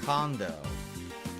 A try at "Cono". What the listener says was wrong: How'd you pronounce that name? Condo? There's no D in Cono! It's Cono! How'd you get condo out of there?